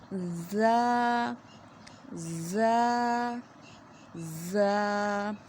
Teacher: آواز کو منہ سے باہر نکالیں زا۔ اس میں تھوڑی سی سختی ہوتی ہے لیکن اسے باریک پڑھتے ہیں، موٹا نہیں کرنا